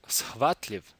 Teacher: the unvoiced alveolar fricative s is being combined with the unvoiced glottal fricative h